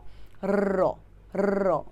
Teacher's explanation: র তুমি যখন র টা বলবে তখন এটা কম্পিত হবে কম্পন হবে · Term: কম্পিত ব্যঞ্জন